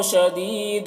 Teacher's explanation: الشین کی آواز سیٹی کی جیسی ہوتی ہے